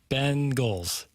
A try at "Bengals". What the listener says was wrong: You put emphasis on the wrong syllable.